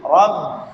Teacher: با بھی شد ہے تو اس کو دو حرف کے بقدر ٹھہر کر پڑھنا ہے